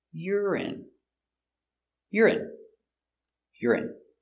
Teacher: urine stress on the first syllable